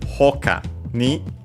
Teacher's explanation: hoka was unaccented, yes, and so hokani should be also unaccented